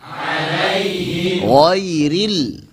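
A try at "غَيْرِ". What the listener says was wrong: Jangan sampai gha tapi gho.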